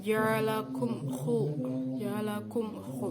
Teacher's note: mim sukun bertemu dengan huruf kho, yaitu idhar syafawi